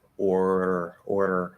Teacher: Let the tip of your tongue be kind of lazy to where you're just sort of barely tapping it like that, very lightly. And that's going to make it easier to do. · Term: flap